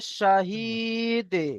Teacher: দাল হচ্ছে হুরুফে কলকলা, কলকলা করতে হবে।